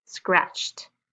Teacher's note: we're going to use the t sound with the ed